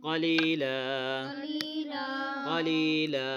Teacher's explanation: قاف کو موٹا پڑھیں گے, یا مدہ ہے اس لیے لمبا اس کو کھینچ کے پڑھیں گے